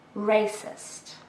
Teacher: This is an adjective with 2 syllables and we stress the first one.